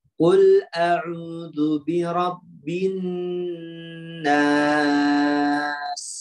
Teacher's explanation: Di sifatnya pada huruf sin contoh yang lebih terlihat, yaitu adanya desir suara ya dengan tajam.